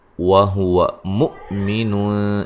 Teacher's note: من نون ساکن کا باریک اخفا ہے، ذکرین را کو باریک پڑھیں گے، او واولین ہے، انثا نون ساکن کا باریک اخفا ہے، ثا مد اصلی ہے، وَهُوَ مُؤْمِنٌ یہاں حمزہ کو جھٹکے سے ادا کریں گے